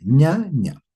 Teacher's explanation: La penúltima sílaba va a ser más fuerte, ña ña. Pero en este caso, eh, veamos, en este caso hay una tilde. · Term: grave